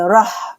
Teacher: را موٹا پڑھیں گے، ہا کو نکالیں گے حلق کے درمیانی حصے سے